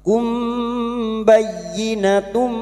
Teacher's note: Mim sukun mendengung selama tiga harakat. Siap membunyikan huruf depannya yaitu huruf ba. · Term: Ikhfa syafawi